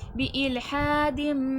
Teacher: इखलाब हो रहा है तनवीन की आवाज को मीम की आवाज में बदल देंगे